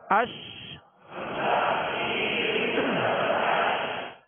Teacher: آواز کا منہ میں پھیل جانا اس کی خوبی ہے، اور اس خوبی کا نام ہے تفشی۔ تفشی کا معنی ہوتا ہے پھیلنا، تو یہ اس حرف کے لیے خاص ہے، اور کسی حرف میں یہ صفت، یہ خوبی نہیں پائی جاتی، یہ صرف اس حرف کے لیے خاص ہے، تفشی۔